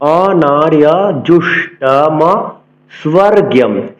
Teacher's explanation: পুনরায় বলছি, অনার্য, অন্তস্থ জকে ইয় উচ্চারণ করতে হবে